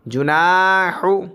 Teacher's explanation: اب یہاں پہ نون کے ساتھ الف مد ہے تو نون کو کھینچیں گے، جیم اور ہا کو نہیں کھینچیں گے۔